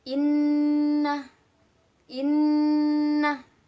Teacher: hai lalu pada ayat 16 sini ada hukum bacaan gunnah yaitu ada Nun tasjid dibacanya dengung